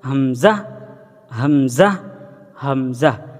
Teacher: এই হামজা উচ্চারণের সময় কোনো টান হবে না, সেদিকে আমরা খেয়াল রাখব।